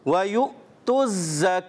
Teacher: जा की अदायगी क्लियर करेंगे सीटी के साथ